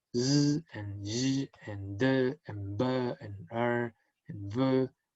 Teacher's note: Those sounds produce a vibration of vocal cords